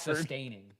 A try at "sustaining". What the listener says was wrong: You threw an extra S in there.